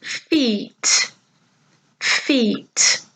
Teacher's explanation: Did you hear the longer sound, E?